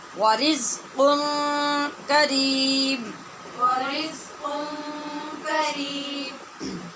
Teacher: یہاں نون تنوین جو قاف کی ہے اس پر اخفا ہو رہا ہے غنّے کے ساتھ